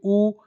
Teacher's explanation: उ के उच्चारण में जीभ का पिछला भाग उठता है और पश्च और मुख लगभग बंद रहता है, तो संवृत हो जाता है। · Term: पश्च संव्रत